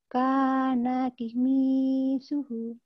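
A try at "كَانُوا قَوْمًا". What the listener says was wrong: Komi, itu ko ya. Komi suhu.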